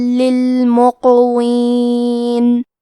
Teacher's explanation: قاف کی ادائیگی زبان کے جڑ اور تالوں کے نرم حصے سے ہے